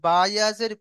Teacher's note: আপনি যখন বাজের বি পড়বেন তখন দুটো ঠোঁট মিলে যায়।